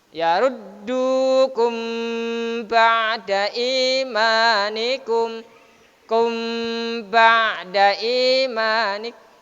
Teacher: Mim mati berjumpa dengan ba dibaca ifa syafawi, tutup bibirnya. · Kum tidak boleh kum ba'da imanikum, harus ada tekanannya macam bacaan ikhfa. Karena bacaan ikhfa syafawi, maka ditekan dan sekaligus sambil menutup dua bibir kita. Didengungkan terus sambil menutup bibir kita.